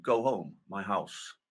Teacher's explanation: MLE speakers don't drop their h's, unlike the traditional Cockney dialects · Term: H dropping